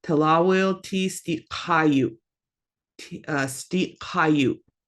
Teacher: with the glottal stop at the end, you're going to have that abrupt stop